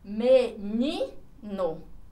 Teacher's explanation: A sílaba forte está aqui na penúltima. Então, ela se classifica como paroxítona.